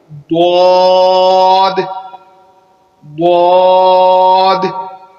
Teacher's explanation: زبان کو دانتوں کے اوپر دائیں یا بائیں طرف لگا کر اس کی جو ہے وہ ادائیگی کریں گے اور موٹا کر کے اس کو پڑھیں گے